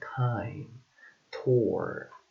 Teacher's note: t which is voiceless alveolar and stop sound